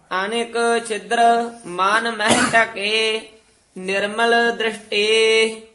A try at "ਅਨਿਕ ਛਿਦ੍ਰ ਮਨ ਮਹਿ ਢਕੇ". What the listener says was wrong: ਢਕੇ ਘਾ ਨਹੀਂ ਲਾ ਦੇਣਾ ਕਕਾ ਉਚਾਰਨ ਕਰਨਾ ਹੈ